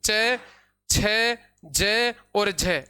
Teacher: और झ यानी च वर्ग के जो चारों वर्ण हैं वो च वर्ग के चारों वर्ण अपने स्पर्श संघर्षी व्यंजन कहलाते हैं